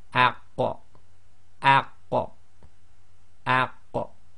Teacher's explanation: Now when you do it with the sakin, it's the opposite. You effectively join the sound to it and then block, and when you go to do the block, you have to do the separation to give the final sound, which gives you the qalqala.